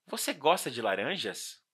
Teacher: Aqui, com a pronúncia mais aberta no final, temos uma pergunta. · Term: entonação da frase